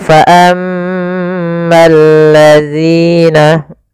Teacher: Kemudian fa ammal ladzina, di sini ada alif lam, yaitu kita namakan dengan alif lam syamsiyah, yaitu alif lam yang ditulis tapi tidak dibaca, sehingga ini langsung ke huruf lam yang ketiga. Ya, al ketemu lam, maka bergabung menjadi lam yang ditasydidkan